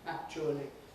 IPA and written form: ˈækʧuəli (actually)